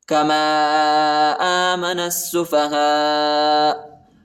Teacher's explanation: الف پر بھی بڑا مد ہے، اس کو تقریباً 3-4 سیکنڈ تک کھینچنا ہے